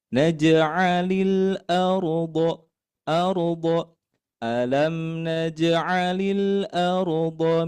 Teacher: lam mati ini hati-hati tidak dibaca memantul